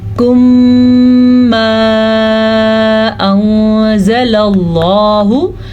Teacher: फिर यहाँ पे इख्फा का कायदा हो रहा है क्योंकि नून साकिन के बाद जा आया हुआ है तो नून साकिन की आवाज़ को छुपा के पढ़ेंगे और किसी हद तक गुन्ना भी करेंगे। और लफ्ज़ अल्लाह को हम पूर्ण पढ़ेंगे क्योंकि लफ्ज़ अल्लाह से पहले ज़बर है। · मीम साकिन के बाद जब दोबारा मीम आ जाए तो वहाँ पे इदगाम शफ़ी का कायदा होता है, वहाँ पे गुन्ना लाजिम है।